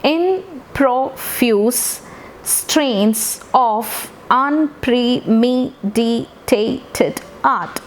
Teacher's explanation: first syllable is unstressed second syllable is stressed unstressed stressed unstressed stressed